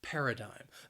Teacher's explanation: it has three syllables and the stress is on that first syllable paradigm that second syllable again it has that schwa sound but · That second syllable, again, it has that schwa sound, but I think that final syllable, that IGM, that spelling, can throw people off a little bit.